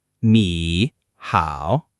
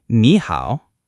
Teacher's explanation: When you have two third tones together, the first one jumps up to second tone. So it's actually ni hao.